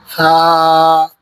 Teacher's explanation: یہ سا جو ہے اس میں سیٹی کی آواز نہیں آنی چاہیے